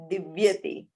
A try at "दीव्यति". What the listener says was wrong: Divyati hrasvaha. ह्रस्व इकारः अस्ति धातुः किन्तु क्रियापदे दीर्घम् अस्ति दीव्यति.